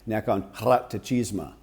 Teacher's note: It's a hard rolled R